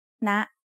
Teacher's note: so it is high tone high tone starts at a high pitch and rises very slightly